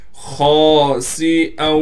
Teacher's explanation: خا کو موٹا کر کے پڑھنا ہے. خا کے بعد الف ہونے کی وجہ سے خا کو کھینچیں گے. سین میں سیٹی ادا کریں گے.